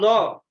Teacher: lo itu makhrajnya di sini tengah lidah nempel geraham. Kemudian dia jahar ya. Tidak keluar udara. Setelah jahar ini kemudian isti'la.